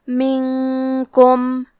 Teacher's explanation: اخفاء کا معنی ہے چھپا دینا تو ہم نون ساکن کو چھپاتے ہوئے اور غنہ کے ساتھ یہ حکم کو ادا کریں گے